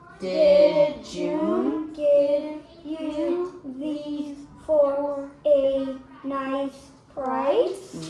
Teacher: your voice went up at the end for the question mark